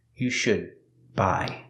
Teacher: The D in should is a stop D, because it's before a consonant.